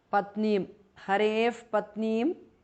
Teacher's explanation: visarga changes to upadhmaniya. Patneem harev patneem because of sandhi.